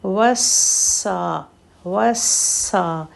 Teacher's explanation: واو نے سین سے ملنا ہے، پھر سین کی سیٹی کو کلیئر کرنا ہے، اور سین کو تھوڑا سا ہولڈ کرنا ہے